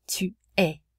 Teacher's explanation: The final S again is not pronounced.